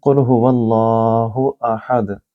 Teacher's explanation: یہاں قاف کو آپ اپنی زبان کے پچھلے حصے سے ادا کریں گے